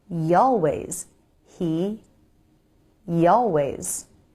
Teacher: The Y is a glide consonant, so we can use it to smoothly glide between words.